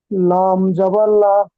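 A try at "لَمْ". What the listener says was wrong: একদম ভুল হচ্ছে মিমের উপরে সাকিন আছে লামটা মিমটা লামের সাথে মিলে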